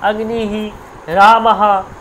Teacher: এবার যদি বিসর্গ থাকে তখন হি, একটা হয়ের মতো উচ্চারণ হয়, অগ্নিহি, রামাহা, এরকম করে উচ্চারণ হয়।